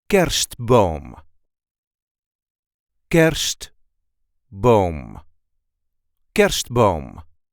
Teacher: The emphasis is on the first syllable.